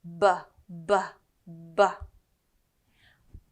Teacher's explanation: the B sound it's like a like a little explosion